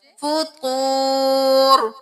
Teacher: واو ساکن ہے تو ایک الف کے برابر کھینچے